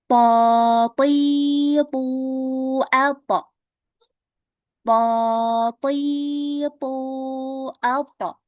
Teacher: pangkal lidahnya dinaikkan ya biar huruf to itu dibacanya tebal